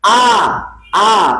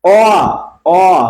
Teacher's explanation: দেখেন আ আ একবারে গোড়া, অ অ অটা দেখেন, আ বলে দেখেন আর অ বলে দেখেন, অটা আরেকটু উঠে উঠে যাচ্ছে না? আ একবারে গোড়া, অ আয়ের চেয়ে একটু এগিয়ে আসছে, এগিয়ে আসছে, উঁচুর দিকে এগিয়ে আসছে, দুই তালায় চলে গেছে, একতলা থেকে দুই তালায় চলে গেছে।